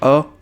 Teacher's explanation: अ के उच्चारण में जीभ का मध्य भाग का प्रयोग किया जाता है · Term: मध्य स्वर